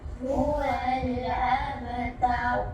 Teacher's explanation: Inilah qalqalah yang paling rendah lantunan dia